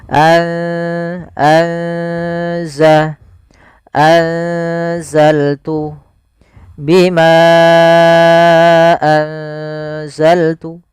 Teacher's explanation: ikhfa di antara keduanya sehingga nunnya samarkan ke Zai anza atau biasa lebih mudah untuk memperingatnya pakai ng atau Eng